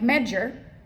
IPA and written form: ˈmɛdʒər (measure)